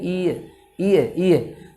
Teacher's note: तो अब आप देखिए ई और ई में यदि ए मिले तो क्या बनता है, ये बनता है। ई ए आप जब बोलेंगे एक साथ मिला के ई और ए को, तो निश्चित रूप से अगर आप अभ्यास करेंगे तो ये की ध्वनि निकलेगी। ई ए को जब एक साथ बोलेंगे आप, कोशिश कीजिए ई ए, तो वो अंतिम रूप से एक मशीन के द्वारा अगर हम प्रयोग करें और फास्ट बोलें, इसको बिल्कुल मिला के बोलेंगे तो क्या बन जाएगा, ये बन जाएगा।